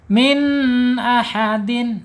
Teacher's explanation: Idhar halq ya. Alif huruf tenggorokan dibaca jelas ya. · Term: izhar hakiki